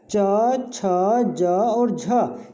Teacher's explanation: च छ ज और झ, ये हमारे तालु से बोले जाने वाले व्यंजन हैं